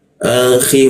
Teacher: Akhi masuk ke khi, di mana di atas jakun dia. Khi ada ngoroknya dia.